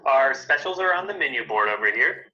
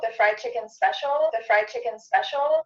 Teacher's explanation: when you're saying so fast that your tongue doesn't come between your teeth, it just touches the back of your teeth